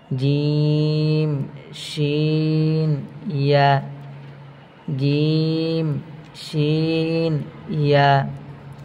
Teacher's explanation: 6 নম্বর মাখরাজ, জিহ্বার মধ্যখান তার বরাবর উপরের তালুর সঙ্গে লাগাইয়া